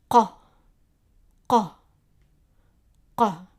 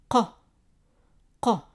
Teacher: Qaaf. The sound is like a Q, but pronounced in the back of the mouth.